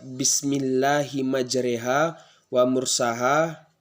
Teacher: imalah itu ialah seperti kita membaca huruf lebih ke huruf e